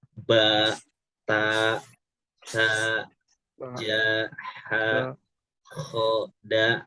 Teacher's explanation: Ba ini ketemu dengan alif jadinya panjang. Jadi dibacanya 2 harokat. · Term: mad tabi'i